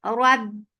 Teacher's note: Make ra heavy whenever ra is with fatha, the might is heavy. Rab and ba will get sifa shidda. No flow of sound whatsoever, but the sound will cut off there and then. Rab for fatha open jaws, the sound is short.